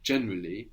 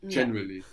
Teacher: when we are using Latin words often so we say generally we have that kind of heavy initial accent generally and then the rest of the vowels we kind of swallow them up